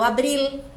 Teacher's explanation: lado de uma consoante esse l tem que ser pronunciado Abril o l em espanhol não tem som de u como em português o l tem som de L